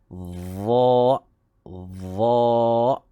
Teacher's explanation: So huruf dha hendaklah menyamai huruf dhal. Hujung lidah dikeluarkan dan dia adalah huruf isti'la, maka pangkal lidah kena diangkat. Jadi sebutannya ialah dha.